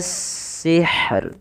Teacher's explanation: rohnya juga tetap dibaca dengan bacaan tipis rohnya